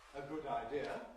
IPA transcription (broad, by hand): ə ˈgʊd aɪˈdɪə